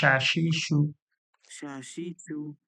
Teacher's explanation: জিভের মাঝখান ও সরাসরি তালু থেকে মোটা মোটা সিটির মতো আওয়াজ বেরোবে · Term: বড় শিন